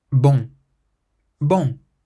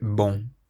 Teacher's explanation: remember that nasal sound on the end of this word, so it's not bon, but bon.